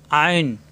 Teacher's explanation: আইন, কণ্ঠনালীর মাঝখানে চাপ সৃষ্টি হবে,